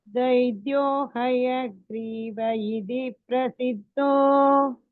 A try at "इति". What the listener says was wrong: इति சொல்லக்கூடாது, इति த போட்டுக்கோங்க.